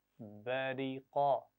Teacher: बा को मोटा नहीं पढ़ना, रा को भी मोटा नहीं पढ़ना